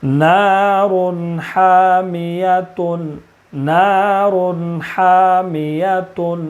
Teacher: تنوین کے بعد حروف حلقی کے 6 حرفوں میں سے حا ہے، اس لیے تنوین کو بغیر غنہ کے جلدی پڑھیں گے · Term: اظہار حلقی